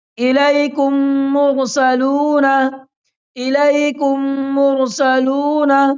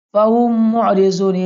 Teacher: میم ساکن کے بعد میم آئے تو میم سے ملا کر غننے کے ساتھ پڑھا جائے گا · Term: ادغام شفوی